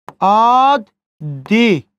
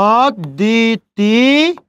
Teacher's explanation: শব্দের মাঝে দর সাথে ব ফলা যুক্ত হয়েছে, ওই জন্য দয়ের উচ্চারণ কয়বার হয়েছে? 2 বার।